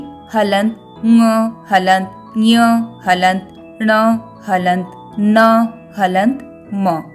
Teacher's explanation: इनके उच्चारण में वायु मुख में अवरुद्ध होती है यानी रुकती है और नाक से बाहर आती है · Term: अनुनासिक, पंचमाक्षर